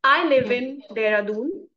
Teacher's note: again I have a falling intonation here my voice should not go up it should go a bit neutral down